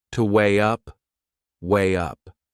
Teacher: we insert a little Y sound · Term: linking sound